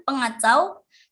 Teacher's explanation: Nah, pada contoh yang terakhir itu ada kata dasar kacau dengan mendapatkan prefiks penasal sehingga menghasilkan kata bentukan pengacau. Terdapat pelepasan fonem K diluluhkan dengan nasal eng. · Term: penghilangan fonem